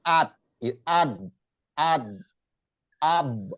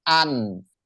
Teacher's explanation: Jadi ketika dia dimatikan nun itu an, nggak mengalir kayak ha, an, cuman nggak terhenti kayak jim. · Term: at-tawassuto